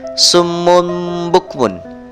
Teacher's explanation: Summun bukmun, tanwin bertemu huruf ba, bacaan iklab. Suara tanwinnya diganti menjadi huruf mim mati